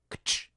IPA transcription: ktʃ